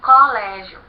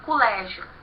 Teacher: Então ele nos diz que Pernambuco eles vão falar colégio, eles vão tratar uma palavra paroxítona como se fosse uma palavra proparoxítona, né? Eles vão colocar como sílaba mais forte a sílaba có.